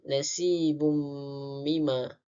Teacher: Kemudian nasibum mima, di mana hukum tajwidnya adalah idgham ma'al hunnah dan cara bacaannya memasukkan huruf tanwin di dalam mim beserta dengung dua harakat.